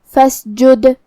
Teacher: فسجد آخری میں دال پہ جزم ہے، تو یہاں حرف دال کا حکم ہے قلقلہ. قلقلہ کا معنی ہے حرف ساکن کو ہلانا، تو ہمیں دال کو ہلاتے ہوئے یہ کلمہ کو پڑھنا ہے